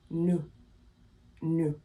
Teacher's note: The S is silent. It's only pronounced if it's in front of a vowel.